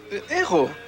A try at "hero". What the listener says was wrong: Yeah, but in English, we pronounce the H. Hero.